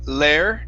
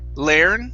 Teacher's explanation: instead of saying lair learn okay go straight to it go straight to an er sound learn learn that's it okay and then here okay let's work